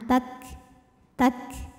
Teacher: untuk Kaf yang sukun ada anginnya keluar belakangan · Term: Hames